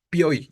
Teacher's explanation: alguien había dicho o piy todo es junto no pioi entonces vean como la i la o la i tres vocales consecutivas quedan en la misma sílaba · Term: triptongo